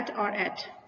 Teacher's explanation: इसमें एक ही सिलेबल है, लेकिन देखिए इसमें ऑनसेट नहीं है क्योंकि कॉन्सोनेंट है ही नहीं वॉल साउंड से पहले